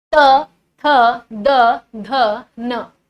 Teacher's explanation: आपकी जीभ दांतों से टच होगी। तभी आप यह वर्ण बोल पाएंगे। · तय वर्ग जो मैंने आपको बताया ये दंतव्य वाला, ये त थ द ध न जो है, ये आपकी जो जीभ है वो दांतों को टच कर रही होगी।